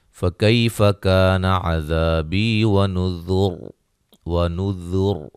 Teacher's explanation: را کو موٹا ادا کریں گے وقفاً